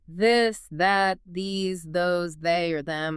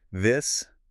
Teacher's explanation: When you produce this, you must physically engage your vocal cords. You should feel a distinct vibration in your throat. Like a buzzing. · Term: voiced th